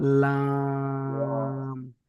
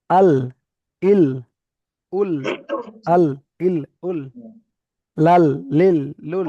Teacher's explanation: লাম জিভের আগার কিনারা, জিভের আগার কিনারা এবং সামনের উপরের, সামনের উপরের দুই পাশের গোড়ার দাঁতের সাথে লাগিয়ে, উপরের দুই পাশের, পাশে পাশে দুই পাশের গোড়ার সঙ্গে লাগিয়ে লাম লাম, লাম। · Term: লামের মাখরাজ